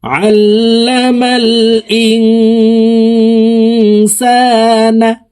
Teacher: ইং এখানে ইকফা গুন্না, নুন সেকেন্ডের পরে ইকফার 15টি হরফের ভিতরে একটি হরফ সিন আসছে, এই কারণে এই নুন সেকেন্ডকে নাকের ভিতরে লুকাইয়া গুন্নার সহিত পড়ব